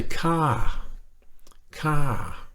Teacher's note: it's got a falling tone it goes up a little bit then it comes down and it does go down a little bit further than it